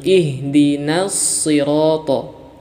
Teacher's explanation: ini huruf so harus kita tebalkan jangan kita baca huruf so ini dengan huruf Sin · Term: sifat tebal